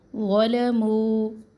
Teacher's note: ذو کو پڑھیں گے موٹا, لیکن اس میں زا جیسی شدت نہیں ہونی چاہیے کیونکہ ثا ذال اور ذو اس کا ایک ہی مخرج ہے